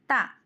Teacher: శ్వాసం అల్ప ప్రాణం దంత్య స్పర్శం